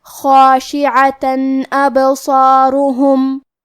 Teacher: کلمت ابصارهم الف حروف الاظہار میں سے ہے اور اظہار کا معنی ہے ظاہر کرنا، اور کیونکہ تنوین کی اصلیت نون ساکن ہے تو ہم یہاں تنوین ظاہر کریں گے اور اسے نون ساکن پڑھیں گے اور بغیر غنہ سے یہ حکم کو ادا کریں گے